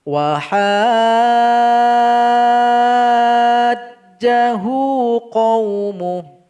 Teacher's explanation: Kemudian pada ayat 80 ada lagi mad lazim mustaqal kilmi. Ha kita panjangkan dulu 6 harokat baru ditasydidkan ke huruf jim